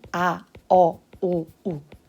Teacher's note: 입술과 혀가 한 번만 움직이고 더 이상 움직이지 않고 고정이 되어 있습니다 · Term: 단모음